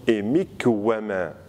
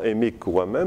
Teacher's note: quand vous avez par exemple un ne, final qui rencontre un we, ça devient un we gémini